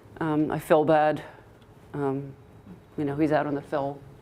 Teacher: a lot of people around here would pronounce feel and fill the same way